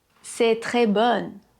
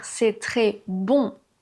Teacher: Mais il faudrait dire « c'est très bon ». La voyelle nasale est fermée, elle est plus courte que le « on ».